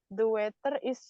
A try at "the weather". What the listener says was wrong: The weather, jadi nggak pakai agak d gitu ya, the gitu, bukan the weather, pakai t, tapi the weather.